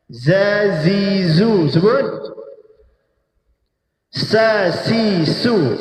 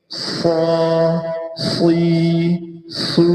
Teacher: Zai sin dia merendah lidah. Istifalun kita panggil. Al-istifal.